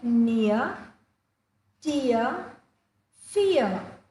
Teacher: the r that comes at the end of English words are usually silent